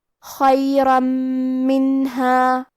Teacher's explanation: کلمت خیرن میں خا کو ہمیں حلق کے اوپر والے حصے سے پڑھنا ہے اور خا حروف تفخیم میں سے ہے تو ہم یہ حرف کو بھاری آواز میں پڑھیں گے. · میم حروف الادغام بغنہ میں سے ہے تو ہم یہ حکم کو غنہ اور تشدید کے ساتھ ادا کریں گے